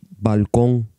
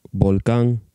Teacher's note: The N consonant, N, is velarized and pronounced N at the end of words.